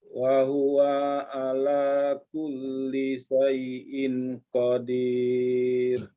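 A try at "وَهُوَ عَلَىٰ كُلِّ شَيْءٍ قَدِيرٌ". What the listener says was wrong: paling di ing-nya tadi ya. Wa huwa ala kulli syai'in qadir. Baca samar. Syai'in ing. Bacanya eng. Syai'in qadir.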